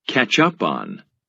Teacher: When a phrasal verb has three parts, a verb, a particle, and a preposition, we stress the particle, as in catch up on.